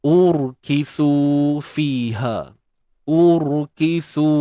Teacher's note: Ra yang sukun ataupun mati yang sebelumnya berbaris depan, maka kita kena tebalkan ra ini.